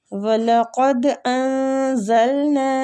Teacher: وَلَقَدْ أَنزَلْنَا إِلَيْكَ آيَاتٍ بَيِّنَاتٍ۔ وَلَقَدْ دال پہ کلکلہ کریں گے، قاف مستعلیہ حروف ہے، نون کا اخفا کریں گے · زلنا نون پہ جو مد ہو رہی ہے مد جائز منفصل ہو رہی ہے، اس کی مقدار 3 الف ہے کھینچنے کی